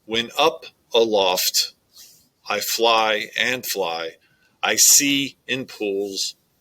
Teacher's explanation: it is iambic throughout the whole verse